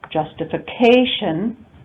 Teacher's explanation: So the example we have here is justification, primary stress on the 4th syllable, justification, but we also have secondary stress on the 1st syllable.